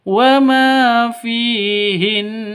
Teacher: Karena berada di waqaf di akhir kalimat. Berarti cara bacanya harus ditahan, didengungkan selama dua ketukan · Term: gunah musyaddadah